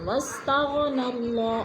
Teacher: واستغنى اللہ اللہ پر پڑھا جائے گا، واللہ بھی پر پڑھا جائے گا، اس لیے کہ اللہ سے پہلے لفظ بو کے اوپر زبر ہے تو اللہ کو پر کر کے پڑھیں گے